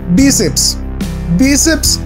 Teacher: Bíceps tiene el acento en la penúltima sílaba, o sea que es grave.